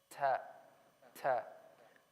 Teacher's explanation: there has to be a small whisper at the end of ta. After I pronounce the ta, there has to be a very small whisper, and that's the air hissing through when I make the sound of ta.